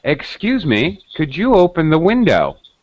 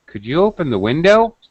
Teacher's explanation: with rising intonation at the end